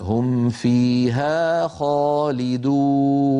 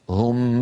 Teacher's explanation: لما أنهي الميم أجد أسناني تلقائيا موجودة على باطن الشفة السفلى، فألفظوا فاء بسهولة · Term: الميم عند الفاء